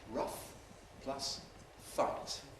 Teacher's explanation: What happens here is that we get a kind of long fricative. We just keep it going. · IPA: [ˈrʌf ˈfaɪt]